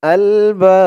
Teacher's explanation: হামজা দিয়ে লাম ধরবে আল বাব আলবাব এখানে অক্ফা করার কারণে এই জবরের পরে খালি আলিফ বা এই এক আলিফ টানটা 3 আলিফ টান হয়ে গেছে বা বলে 3 আলিফ টান দিয়ে এই বাকে ধরেছি এই বার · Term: মধ্যে আরজি